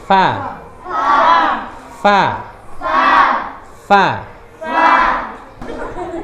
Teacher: Va itu ujung Gigi atas dan bibir bawah